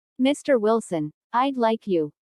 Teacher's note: notice the rising intonation on mr wilson which is used to address someone listen for that d in i'd like this means i would